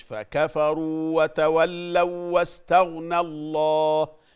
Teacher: اللام المشدده ما بنستنا عليها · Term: اللام المشددة